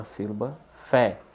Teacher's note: Qual a sílaba tônica na palavra café? É a última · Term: oxítona